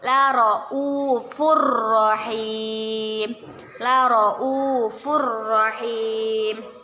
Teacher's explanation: Kita baca, kita masukkan, kita membacanya dengan dimasukkan ke huruf ro tapi tidak berdengung.